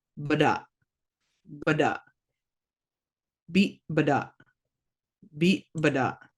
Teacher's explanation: with the glottal stop at the end, you're going to just cut that word off